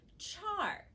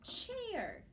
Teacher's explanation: i definitely hear an a with an er right after it